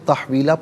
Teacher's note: من رسولین، رسولی علیحدہ، نا علیحدہ ملا کر پڑھیں گے، رسولین، وَلَا تَجِدُوا، وَلَا تَجِدُوا لِسُنَّتِنَا، لِسُنَّتِنَا تَحْوِيلًا، یہاں وقف پڑھیں گے تو تحویلہ پڑھیں گے، 2 زبر کی تنوین وقف میں الف سے چینج ہو جاتی ہے۔